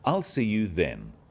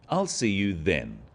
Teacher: the stress is on the word then to confirm that the time is definite